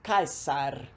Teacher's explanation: O S era sempre S, por isso caesar. Nunca som de Z no meio, como acontece no português.